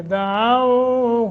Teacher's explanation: دعاؤ وہ ساکن ما قبل فتح ہے، حروف لین بنتے ہیں، یہ تو اس کو نرمی کے ساتھ 1 الف کے برابر مد کریں گے